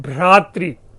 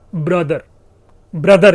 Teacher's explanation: बड़ा ही पॉपुलर शब्द है भ्रातृ, भाई के लिए प्रयोग लाते हैं भ्रातृ, भ इंग्लिश में क्या है, ट्यूटोनिक में क्या है, ब्रदर, ब्रदर जिसे कहते हैं। भ ब में चतुर्थ वर्ण तृतीय वर्ण में परिवर्तित हो रहा है।